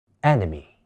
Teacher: enemy▁第二個音節嘅▁E▁亦都會讀做弱化音